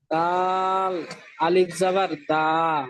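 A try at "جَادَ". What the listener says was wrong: না, দাল আলিফ, দালের পরে আলিফ নেই তো। জার পরে আলিফ আছে, দালের পরে তো আলিফ নেই। এই দালের পরে কি আলিফ আছে? হ্যাঁ, যার পরে আলিফ আছে, তাহলে বানানটা, এটা যা দা, এটা আমি বানানটা করবো কেমন ভাবে, বানানটা কেমন ভাবে পদ্ধতি বলেছিলাম সেরকম ভাবে করেন।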